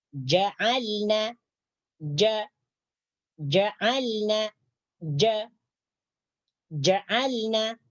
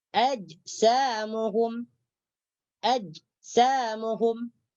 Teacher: Huruf jim ni apabila kita baca atau kita sebutkan, maka suara kita tertahan. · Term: syiddah